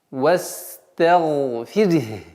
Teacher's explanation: После звука ра, мягкого звука ра, в данном случае она произносится мягче, нужно до конца произнести звук ха.